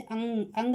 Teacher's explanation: मुंह और नाक दोनों से हवा निकलती है यानी कि अनुनासिक · अंग हम बोलते हैं तो नाक से बोला जाता है, इसलिए क्या है, ये नाक और मुंह दोनों से बोला जाता है, यानी कि अनुनासिक, और हम इसको अनुनासिक ही बोलते हैं।